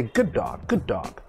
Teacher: we don't pronounce two d's only one d sound